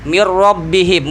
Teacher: minnya itu hilangkan nunnya karena idgham. Masuk blebur sama ro. Mir rabbihim, bukan min rabbihim lagi.